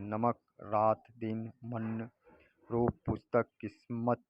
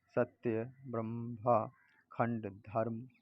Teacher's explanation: हिंदी के प्रत्येक शब्द के अंतिम अ लगे वर्ण का उच्चारण हलंत सा होता है, जैसे नमक, रात, दिन, मन, रूप, पुस्तक, किस्मत इत्यादि।